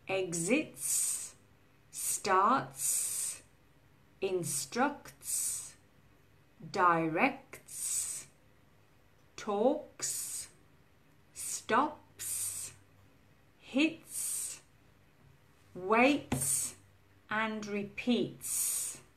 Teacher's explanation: So this has no vibration here. When you say these verbs, there won't be any vibration at all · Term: s sound